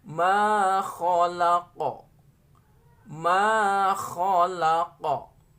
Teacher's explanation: kalau qaf ini nanti dibacanya waqaf, diberhentikan, maka dia memiliki sifat qalqalah.